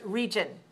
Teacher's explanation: Region. 2 syllables stressed on the first. Region. 2-1.